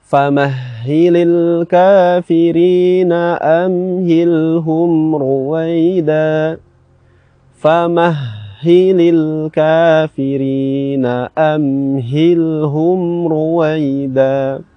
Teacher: makhraj untuk huruf H ini berada di pangkal tenggorokan